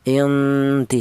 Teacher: ikhfa a'la itu samar lebih dominan daripada dengung atau samarnya lebih kuat ya. Artinya a'la itu tingkat kesamarannya lebih kuat dibanding dengungnya.